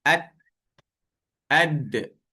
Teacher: Pangkal gigi kacip atas dengan hujung lidah.